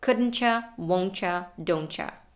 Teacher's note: When we connect T and Y, we have the option to pronounce it as a ch sound, as in these cases.